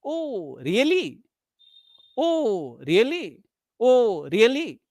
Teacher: First Rise then fall